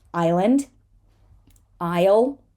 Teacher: an SL situation is very often going to end up with just sounding just like an L